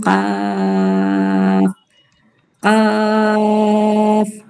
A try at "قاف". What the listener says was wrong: قاف کو اور کھینچیے.